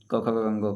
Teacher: उच्चारण स्थान क वर्ग का कंठ से होता है, क ख ग घ का।